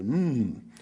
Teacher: me that m is the sound you make when you know when you're saying M it's also your lips press together